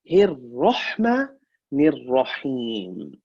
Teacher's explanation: 2 ra's. First ra, hir is empty. The second ra is full mouth.